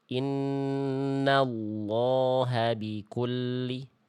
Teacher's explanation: Tebalkan lamnya. Jangan la. Angkat pangkal lidah.